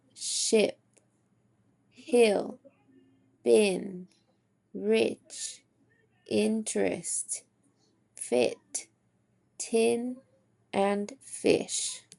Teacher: The second phone sound that we will talk about is I. When we are making the I sound, our lips are relaxed and slightly parted or spread. Our jaw is lower than the e and our tongue is also high and front. This is considered a lax phone as in ship, hill, bin, rich, interest, fit, tin, and fish. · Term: lax phoneme